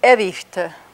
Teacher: And that second I is whispered.